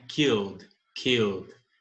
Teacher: Repare que eu não pronuncio o E, eu pulo direto do som do L para o som do D. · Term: som de D